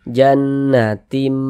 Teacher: Jangan dibaca jannatin, tin, jangan, tapi dirubah menjadi mim. Jannatim. Kemudian kita dengungkan, jadi suaranya itu kita tahan, kita panjangkan sejenak. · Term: iqlab